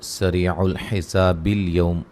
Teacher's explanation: یہ حمزہ گر جائے گا وسط کلام میں، اور اس ایسے حمزہ کو حمزہ وصلی کہا جاتا ہے، ٹھیک ہے، جو گر جائے درمیان میں وسط کلام میں، جو گر جائے اس کو حمزہ وصلی کہا جاتا ہے۔